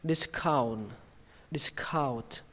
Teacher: nhưng mà âm tờ nó quan trọng hơn nên các bạn cứ bắn hơi nó ra âm n này thì lướt qua cũng được